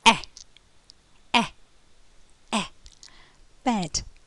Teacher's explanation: the lip lips are um eh quite spread quite spread but the mouth is open the tongue is at the front of the mouth · it's a short sound the mouth is half closed half open the lip lips are um eh quite spread quite spread but